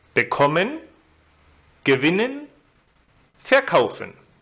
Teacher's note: in the group of inseparable verbs, the second syllable is stressed, as in bekommen, gewinnen, verkaufen.